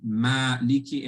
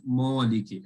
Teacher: the alif will also be light because it's dependent on the letter before it, i.e. the mim. Therefore, it will be maliki and not moliki.